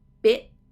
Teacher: a stop t bit it so what i'm feeling there is when i'm doing the e the tongue is coming up just behind the teeth to stop the t so you don't want to skip the t because then you